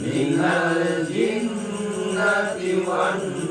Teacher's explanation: Ada dua N yang harus ditahan.